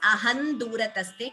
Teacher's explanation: aham durataste, you could chant it as ahan durataste, combining the sandhi.